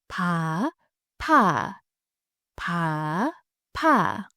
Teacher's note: Feel the little burst of air when you say 파.